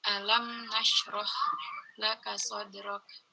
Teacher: Alam nashrah tidak pakai gunnah.